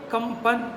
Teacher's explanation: प वर्ग में पंचम जो उसका अक्षर है वो म है, इसलिए उसके पहले जो भी अनुस्वार चढ़ा है उसमें माँ का उच्चारण होगा